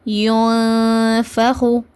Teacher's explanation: இஹ்ஃபானா நூனை பாதியாக நம்ம மறைச்சி குன்னாவோட ஓதணும்.